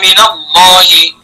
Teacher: من حرف جار کے نون کو زبر دیا جائے گا